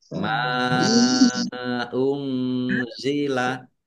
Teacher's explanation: Nun sukun bertemu dengan huruf za, bacaan ikhfa, dibaca samar-samar. · Tapi balir ma unzila mim fathah alif mat tobi'i, tetapi karena bertemu dengan huruf alif di kata yang berbeda, maka menjadi mat jaiz munfasil. Dibaca panjang boleh 5, boleh 2 harokat.